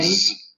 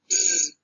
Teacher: To produce alveolar fricative sounds, the tip and blade of the tongue are very close to the alveolar ridge. A narrowing is produced at that point.